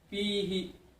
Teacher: Fihi, di kalimat fihi itu ada mat tabi karena kasrah bertemu dengan ya mati, bacanya dua.